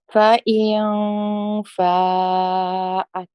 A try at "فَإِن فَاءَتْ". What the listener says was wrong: MashaAllah, good. Alhamdulillah.